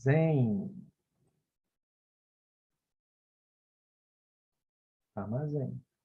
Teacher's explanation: no final de uma sílaba, a vogal ao lado da consoante M ou N torna-se um ditongo